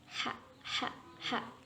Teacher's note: daerah katup tenggorokan atau epiglotis itu bertemu dengan dinding tenggorokan